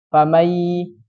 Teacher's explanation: Kan otomatis kan cara bacanya famai, langsung masuk ke huruf ya. Nunnya tidak terbaca. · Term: idgham bi gunnah